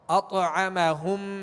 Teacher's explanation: قلقلہ، یہ حروف قلقلہ میں سے، لہذا یہاں پر اطعم، اطعم نہیں پڑھیں گے بلکہ اطعم، آواز لوٹتی آئے گی، آواز میں جنبش پیدا ہوگی، اطعمہم من، اب من پر جو ہم نے غنہ کیا کیوں کیا؟